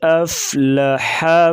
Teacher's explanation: ہا کی باریک آواز نکالیں گے گلے سے